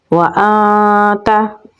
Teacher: नून साकिन के बाद हरूफ इख्फ़ा में से ता है तो यहाँ पर हम इख्फ़ा करेंगे। नून की आवाज़ को नाक में लेके जाएंगे तो पढ़ा जाएगा व आता।